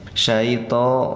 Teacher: to-nya patah berdiri, panjangnya 2 harokat, namanya mad tabi'i atau mad asli